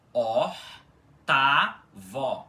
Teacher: Com esse ó aspirado e átono no início e depois a sílaba tá, que é a tônica e o vó no final com o aberto. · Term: sílaba tônica